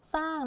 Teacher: เวลาที่เราอ่านออกเสียงก็จะเป็นเน้นนี่ตัวนี้สเสืออย่างเดียวไม่ออกเสียงรอเรือนะคะ เอาสเสือผสมกับไม้โทสระอาแล้วก็งงูนะคะก็จะเป็นคำว่าสร้างนะทีนี้ก็ยังเหมือนเดิมเลยเราก็เจอคำว่าอยู่ด้วยนะที่เป็นอะไรคะอักษรนำแบบออนำยอนั่นเองนี่อ่าได้ทบทวนกับเรื่องที่เรานะคะเรียนไปแล้วด้วยนะคะอ่ะเราจะเห็นได้ว่าสิ่งที่เราเรียนไปนะคะคำควบกล้ำไม่แท้แบบในลักษณะนี้นะเขาจะอ่านเพียงแค่พยัญชนะต้นนะคะตัวแรกเท่านั้นนะคะส่วนตัวที่2เนี่ยก็จะไม่อ่านออกเสียงออกมา